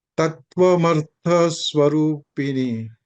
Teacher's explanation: The tha is Mahaprana.